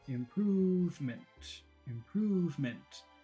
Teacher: So the word improvement is short, long, short.